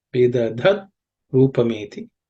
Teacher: The tip of the tongue should point up towards the roof of the mouth. With the dha, that dha is also an aspirated sound. It's the fourth letter in the Varga.